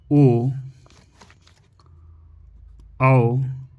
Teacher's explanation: ओ औ को कंठोस्ट नामक स्थान से बोला जाता है। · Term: कंठोष्ठम